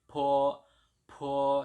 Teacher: B di sini dibaca P, dan P itu termasuk huruf yang mengeluarkan angin, jadi dibacanya PH ya, jadi po, seperti itu.